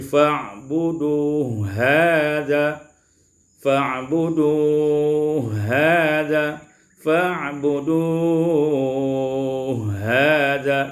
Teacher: Pada ayat yang ke-51 fa'buduhu hadza, ini diwasalkan hu dengan ha, idghamul ha fil ha, diidghamkanlah ha pada ha dengan idgham kamil menjadi fa'budu hadza, fa'budu hadza, fa'budu hadza, yaitu qasar, tawassut dan isba'.